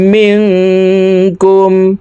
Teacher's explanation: এই নুন সাকিনকে নাকের ভিতরে লুকাইয়া গুন্নার সহিত পড়ব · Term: ইকফাহ গুন্না